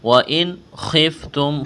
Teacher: خا کو موٹا کرنا ہے، خِفْتُمْ تا کو باریک کرنا ہے، میم کے ساتھ ملائیں گے، میم کے اوپر جزم ہے.